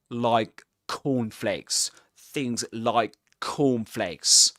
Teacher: he pronounces two k sounds, but the first one is unreleased. He doesn't release the air at the end of it.